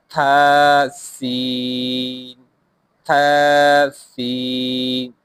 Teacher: سین پڑھتے وقت سیٹی کی آواز آنی چاہیے